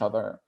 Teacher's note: That was a very artful, very rhotic other that I just said.